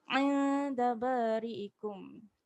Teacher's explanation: 'Inda, jangan lupa untuk dengung, nun mati tanpa tanda.